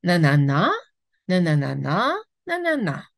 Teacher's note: ça monte beaucoup et ça descend beaucoup parce que l'accent est long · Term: mélodie du français